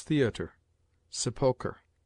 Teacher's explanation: Re at the end of some words derived from the Latin or French is pronounced like a weak er